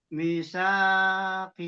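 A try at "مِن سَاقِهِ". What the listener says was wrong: Oh, mie-nya demat nggak mie-nya? Kalau tadi dibacanya saya dengar misakihi, mie-nya hilang.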